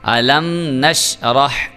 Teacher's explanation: میم ساکن کے بعد آ گیا نون، تو نون اس کا مطلب ہے یہاں پہ ہم اظہار شفوی کریں گے اور غنہ نہیں کریں گے